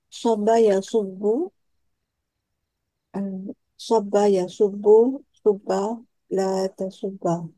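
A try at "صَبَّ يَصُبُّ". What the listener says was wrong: Betul,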